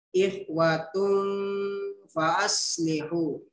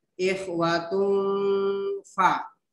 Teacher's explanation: Jadi kata ikhwatum fa'aslihu di sini berdengun ya. Hukum bacaannya adalah ikhfa.